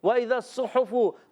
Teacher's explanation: ہا کہاں سے ادا ہوتا ہے؟ حلق کے درمیان والے حصے سے۔